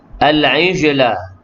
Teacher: jim yang sukun tu qalqalah, surah berdetak kecil